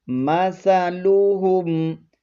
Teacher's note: سا کو نرمی سے ادا کریں گے، اس پر سیٹی کی آواز بالکل نہیں آنی چاہیے ، مثلهم، کسی بھی حرکت کو آپ نے لمبا نہیں کرنا،